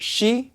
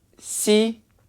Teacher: if you move your tongue a bit more forward and clench your mouth you get not she but see